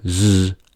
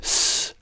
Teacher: when we say /z/, there is a vibration, but when we say /s/, there is no vibration